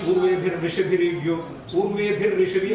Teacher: how visarga becomes ra